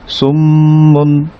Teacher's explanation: মিম তাজদিদ হলে আমরা বলেছিলাম নেজাল সাউন্ড হবে, গুন্না করতে হবে